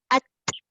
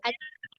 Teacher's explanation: Yang dilepaskan itu ada tak bunyi suara? Tak ada. Yang keluar tu hanya udara sahaja. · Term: hamas